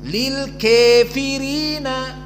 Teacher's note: qiraah Hamzah azzayad dan alqisai dengan imalah alkubro